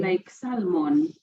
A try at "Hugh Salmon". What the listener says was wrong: Yeah, Hugh Salmon, but with no L, like the fish salmon.